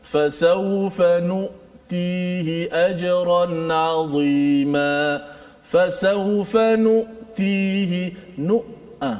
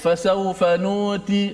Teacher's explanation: Suara kita bila menyebut hamzah tu, dia tertahan. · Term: huruf syiddah